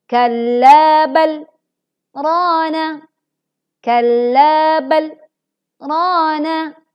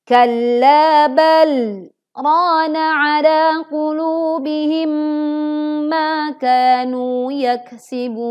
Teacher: Harusnya karena lam juga termasuk ke dalam sifat tawasud atau bainiyah, maka biarkan sebagian suara tertahan di ujung lidah. Maka ada bunyi l.